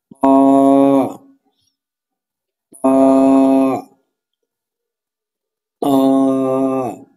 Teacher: জিহ্বার আগা, সামনে, উপরে, দুই দাঁতের গোড়ার সঙ্গে লাগাইয়া উচ্চারিত হয় ত ত ত। হরফটি মোটা হবে, জিহ্বার আগা, সামনে, উপরে, দুই দাঁতের গোড়ার সঙ্গে লাগবে ত ত।